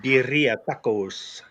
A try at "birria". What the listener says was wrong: emphasis on the wrong syllables.